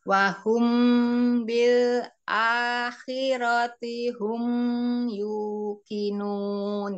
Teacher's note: Mi mimnya ada sifat tawasud ya jadi wahum bilirati hum yuqinun hum ditahan sedikit sebentar mim sukunnya